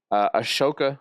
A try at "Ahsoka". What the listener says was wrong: Ahsoka. Ahsoka. the H is silent. It's Ahsoka.